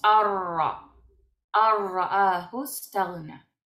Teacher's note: Se escribe anra, pero no decimos anra, sino que decimos arra. Arrahustagna, ¿verdad?